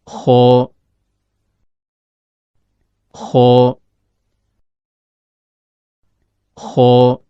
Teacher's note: Huruf kho keluar dari ujung tenggorokan, yaitu berada antara langit-langit atas bagian belakang dengan akar lidah.